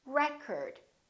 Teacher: word this word if it's a noun it's pronounced as record the first syllable is stressed